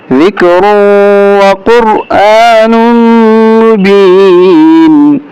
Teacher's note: ان هو الا ذکر وقرآن مبین، اس کو موٹا کریں گے، قاف اور را کو، اور حمزہ کو کھینچیں گے، نون کو میم کے ساتھ ملاتے ہوئے غنہ بھی کریں گے